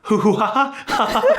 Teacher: Belgians do not tend to make this harsh G sound. It's a lot closer to an H in their dialect